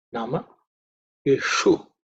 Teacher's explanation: the visarga is dropped because it's followed by E